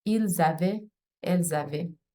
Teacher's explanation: The singulars and the third person plural are pronounced the same way, except that in cases where the verb begins with a vowel, there's a liaison with the S in the plural pronoun